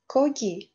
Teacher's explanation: Aytib o'tganimdek, K harfi so'zning boshida K o'qiladi. Harflar orasida, ya'ni so'zni orasida G tarzida o'qiladi. Bunga misol qilib, kogi, ya'ni go'sht so'zini misol keltirishimiz mumkin.